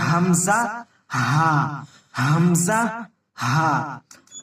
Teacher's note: অর্থাৎ নিচের অংশ। তো কন্ঠনালীর নিচের অংশ থেকে আদায় হয় হামজা হা।